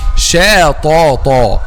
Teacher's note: the correct pronunciation of this word is shata, making a Shīn light and a ta heavy.